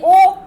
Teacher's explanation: ओष्ठ की बात आए, तो ये ओ आप बोलिए, क्या ओठ से आप बोलते हैं? ओ सही है, ओठ से बोला जाता है।